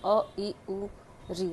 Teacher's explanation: जिन स्वरों के उच्चारण में सबसे कम अर्थात कम एक मात्रा का समय लगता हो उसे सदैव स्वह्रस्व स्वर कहते हैं।